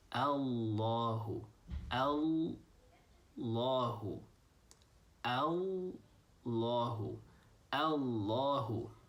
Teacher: Instead of saying Allahu, Allahu, you're holding the L a little bit longer. You're saying Allahu, Allahu, Allahu, Allahu.